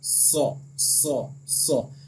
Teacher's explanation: और सौद, सीन और जा, इन तीनों का मखरज जो है वो सेम है, यानी जबान की नोक और दोनों दांतों के अंदरूनी किनारे से ये अदा होता है